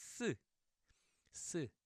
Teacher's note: Now it's 쌍시옷, double consonant, so adding a little more stress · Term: double S